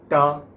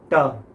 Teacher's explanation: टा में तालू में जुबान ने टक्कर मारी थी